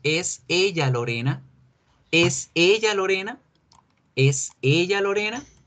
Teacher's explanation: Nuevamente subimos el tono de la voz, intercambiamos al verbo to be con el pronombre y ya tenemos una pregunta.